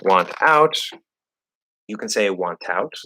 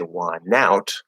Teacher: So it's again about that dynamic range and flow based on how fast you're speaking or how clearly you're speaking for whatever reason in the flow of the context and the flow of your speech. Very often NT plus vowel, the T disappears, the N connects to the vowel instead.